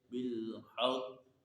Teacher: قاف حروف قلقلہ ہے اور مشدد ہے، تو یہاں پر اس میں جماؤ کرنا ہے لیکن حرکت کو ظاہر نہیں کرنا